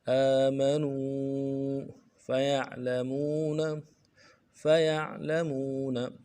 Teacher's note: یا کو عین کے ساتھ ملانا، عین میں آواز جاری رہے گی. فیعلمون، مون میں واو مدہ ہے، ایک الف دار میں کھینچیں گے.